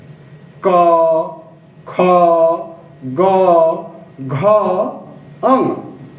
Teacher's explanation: प्रथम वर्ग के पांचों अक्षर का उच्चारण कंठ से होता है